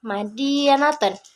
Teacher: babun Nah untuk contoh yang kedua ada Ma atau mim nah mim ini dihasilkan dengan bibir yang menempel seperti dalam contoh madiaten Nah untuk selanjutnya eh di sini ada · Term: suara bibir